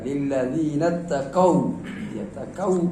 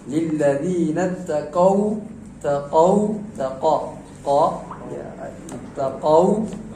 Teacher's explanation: Nah, jangan sampai u itu terbaca o. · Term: bacaan layin